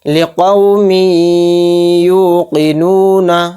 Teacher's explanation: یہاں پر تھوڑی دیر آواز کو روک کر چلیں گے، غنہ کر کر چلیں گے